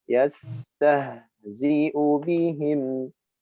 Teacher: Dua-duanya ha dan ha dengan nafas yang mengalir, suara yang memanjang.